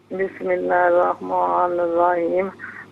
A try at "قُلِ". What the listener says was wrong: قل لام پر تشدید نہیں.